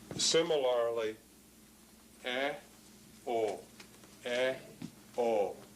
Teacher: Notice the O is rounded. It's a rounded vowel. So these two vowels, O and U, are rounded, whereas E and are not rounded.